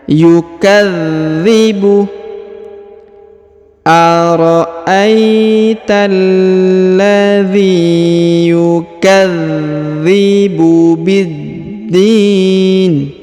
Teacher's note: huruf dza perhatikan berharakat tasdid maka ditahan dan ditekan